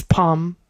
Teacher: we never pronounce the L in palm. It's always palm.